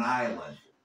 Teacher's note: Y no vamos a pronunciar la S, no vamos a decir Iceland.